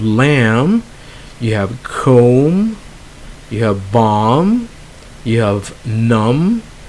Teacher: Now, the next group of letters are those with an MB at the end, and we do not pronounce the B. Okay, so they end with MB, and we drop the B. So the B is silent.